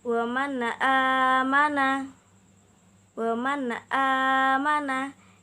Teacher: Jadi nun sukun bertemu dengan hamzah dibaca dengan jelas.